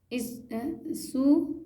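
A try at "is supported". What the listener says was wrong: सू नहीं, स, SU को स। सपोर्ट,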